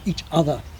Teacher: it sounds like the hard attack of rp traditional rp